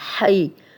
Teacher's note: یا لین ہے جزم والی یا، ہا پہ زبر، تو اس کو بغیر کھینچے نرمی سے پڑھیں گے ہم.